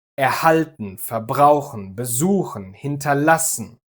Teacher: The intonation or the stress of the verb is never on the prefix. And that is true for every inseparable verb.